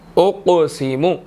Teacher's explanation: قاف جو ہے وہ ساکن ہے اور موٹا بھی ادا کریں گے اور قاف قلقلہ حروفوں میں سے ہے، یہاں پر یہ ساکن ہو گیا تو یہاں پر قلقلہ ہوگا